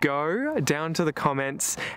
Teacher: we can hear the roticised goat to one degree or another from a lot of younger Australians. This sounds rather like an American guard.